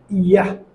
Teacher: এই সাউন্ডটি উচ্চারণ হবে জিহ্বার মধ্যখান উপরের শক্ত তালুর সাথে লাগিয়ে বলতে হবে